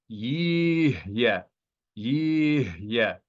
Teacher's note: This hey in the transliteration is bolded to let you know that although this hey is at the end of the syllable, yet it should be pronounced as a consonantal hey. It is not silent. And the shava should be silent shava, but the consonant hey is sounded.